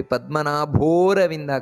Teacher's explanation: ಪದ್ಮನಾಭ ಭೋರವಿಂದ ಭೋ ಅನ್ನೋದು ಮಹಾಪ್ರಾಣ